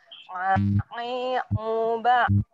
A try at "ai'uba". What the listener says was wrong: Oke, nanti diperbaiki di sukunnya, masih sulit ya. Yang mati atau ain mati di ba.